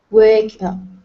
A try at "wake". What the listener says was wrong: Okay, all right, so we have 2 long A's here. So instead of wet and wek, it's wait, and wake. Okay, so add that E sound at the end.